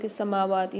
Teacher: سماواتی میں میم اور واو پر کھڑا زبر ہے، دونوں کو ایک الف میں دار کھینچ کے پڑھیں گے۔